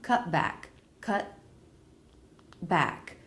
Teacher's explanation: you don't release the tea you don't hear a tea sound what you hear is an abrupt stop then the next word